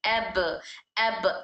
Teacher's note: जब हम हर्फ बा को अदा करते हैं तब दोनों होंठ आपस में मिलते हैं